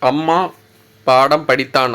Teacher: மகர மெய்யெழுத்து தனக்குரிய அரை மாத்திரையில் முழுமையா ஒலிக்குது